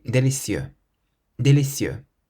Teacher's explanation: So we stress the cieux part at the end.